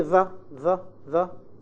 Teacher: you find the tip of the tongue comes between the upper and lower teeth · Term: interdental